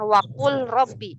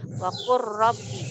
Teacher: Wakur langsung ke ro bertasjid. Wakur. Bukan wakul robbi.